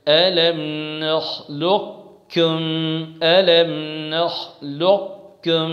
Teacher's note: جی ادغام ناقص کریں گے تو اس کا طریقہ کیا ہے کہ قاف کی صفت استعلاء کو باقی رکھتے ہوئے قاف کو کاف میں ملا دیا جائے گا، اور اس صورت میں ہم قاف کی صفت جو ہے قلقلہ وغیرہ کو ادا نہیں کریں گے۔